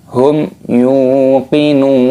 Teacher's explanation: Wa bil akhirati hum yuqinun. Hum yu, mim sukun bertemu dengan huruf ya, yaitu idhar syafawi. Dibaca jelas, jangan didengungkan.